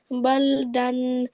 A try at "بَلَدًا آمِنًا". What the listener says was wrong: لام is not ساكن. لام with زبر بلدا آمنا